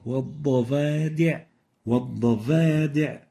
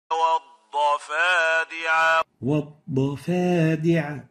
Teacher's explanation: So make sure to give the fa the whisper characteristic. The second mistake is exchanging the fa with the English V.